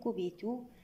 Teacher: كبتوا الواو مد طبيعي بمقدار 2 حركات